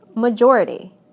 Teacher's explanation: Listen to how the stress moves right to the syllable immediately before the suffix. Adding "this" to major, it becomes majority.